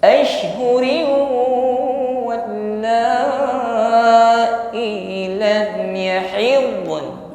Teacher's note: tanwin kasrah bertemu waw, ya, bibir himpun ke depan dan didengungkan